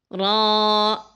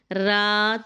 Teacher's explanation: تھوڑی موٹی آواز کرنی ہے، لیکن ہونٹوں کو گول نہیں کرنا، منہ کو کھولنا ہے اوپر سے نیچے کی جانب۔ آپ یوں سمجھ لیں جیسے اوول شیپ ہوتی ہے، اس شیپ میں ہم نے کھولنا ہے اپنے منہ کو۔